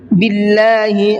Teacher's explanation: اللہ کے لام کو باریک کر کے پڑھا ہے اس لیے کہ اللہ کے لام سے پہلے زیر ہے